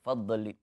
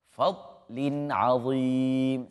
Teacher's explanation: tidak termasuk di antara huruf-huruf qalqalah itu adalah dhad, maka jangan sekali-kali diqalqalahkan dan dipantulkan bacaannya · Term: huruf dhad